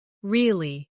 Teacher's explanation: with a falling tone to show you don't believe someone